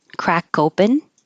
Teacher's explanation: But if I said crack open, now the K will connect and you'll hear crack open